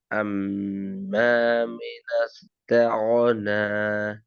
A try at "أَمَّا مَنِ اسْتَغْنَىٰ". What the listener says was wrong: மினஸ் அல்ல மனிஸ் வரணும்.